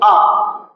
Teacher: जबान कहीं भी टच नहीं करेगी, सिर्फ आपका मध्य भाग में थोड़ा सा ऊपर उठ जाएगी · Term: मध्य स्वर